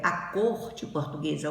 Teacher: o O da sílaba tônica é pronunciado com som fechado